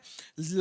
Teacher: ला क्या होता है ये हमारा पार्श्विक वर्ण होता है